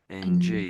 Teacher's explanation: it's at the back and all the air is going to the nasal cavity up here and coming out. And the sound really coming out of your nose. · you're still blocking the air coming into the mouth cuz the tongue is touching the roof of your mouth, but it's at the back and all the air is going to the nasal cavity up here and coming out. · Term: NG sound